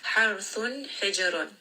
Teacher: Ra here is going to be heavy. It also has tawassut, so rest on this for a moment.